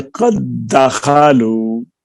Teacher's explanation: دال کا دال میں ادغام ہوا، تو اب ظاہر ہے دال جو مدغم ہے اس کی بھی وہی صفات ہیں، اور جو مدغم فی ہے اس کی بھی وہی صفات ہیں۔ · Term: ادغام تام